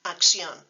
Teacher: the double C in words like acción, where the first one comes out like a K and the second one comes out like an S.